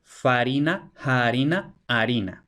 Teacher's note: la F latina se va a aspirar primero y luego se va a elidir, va a desaparecer